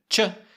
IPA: ʧ